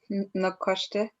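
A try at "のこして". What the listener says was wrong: Nokoshite. Good.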